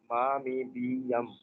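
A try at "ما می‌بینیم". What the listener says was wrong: हाँ, मा मी बीनीम, ये सीधा ए है ही नहीं ना, ये है तो ई की आवाज है, ये हमेशा ई की आवाज देगी, ठीक है। मा मी बीनीम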